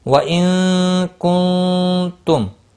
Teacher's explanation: نون ساکن کے بعد کاف اور یہاں پر نون ساکن کے بعد تا، دونوں جگہوں پر اخفاء حقیقی ہوگا